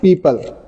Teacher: पी में हमारे दोनों होंठ आपस में मिलने के बाद ये साउंड प्रोड्यूस करते हैं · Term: बाइलिबियल साउंड्स